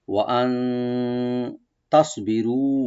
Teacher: ওয়া ওপেন রাখবেন, হামজাকে রাইট দিয়ে, নুন সাকিন এখানে আমরা ইখফা করব